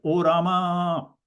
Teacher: the a at the end of Rama is extra long, like O Rama. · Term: pluta